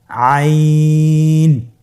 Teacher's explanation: হরফটি কন্ঠনালীর মধ্যখান থেকে উচ্চারিত হয়